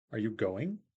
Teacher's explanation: Rising intonation at the end of the sentence so are you going you go up at the end and